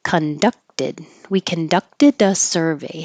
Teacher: you won't hear this K